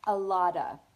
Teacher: The V sound at the end of is just kind of an open sound, a lot of, and we just leave it like that. · You can still say it with the ah. You can just delete the v sound altogether.